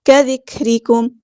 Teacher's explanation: را یہاں پہ باریک لائٹ لیٹر ہے، میم ساکن پہ اظہار شفوی ہو رہا ہے، ٹائم نہیں دینا · کاف ساکن میں ہمز کی صرف شو کرنی ہے